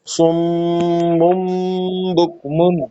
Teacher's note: نون میم میں تبدیل ہو جائے گا، تو سم من سے بن جائے گا سم مم. تو دو مرتبہ میم ہے، ایک سم اس میں غنہ ہے، اور پھر مم بک مم اس میں بھی کرنا ہے.